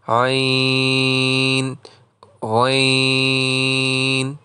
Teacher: غین کے تلفظ میں ادائیگی میں چونکہ یائے لین ہے اور اس کے بعد نون ساکن ہے اس لیے ان پر بھی مد ہوگا